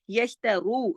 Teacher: را موٹا، دو حرکات کھینچے گا، واو مدہ ہے